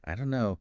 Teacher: the don't and no just merge